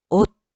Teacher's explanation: 오스가 아니고 옷 디귿소리로. 시옷은 디귿소리로 납니다.